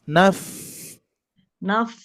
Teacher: pertemuan bibir bawah, tengah bibir bawah menempel ke gigi seri atas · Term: huruf fa